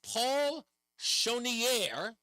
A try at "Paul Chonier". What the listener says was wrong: I think a couple of times you had an extra syllable in there. It's Paul Chonier.